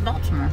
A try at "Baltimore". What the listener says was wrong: No T is silent. Baltimore.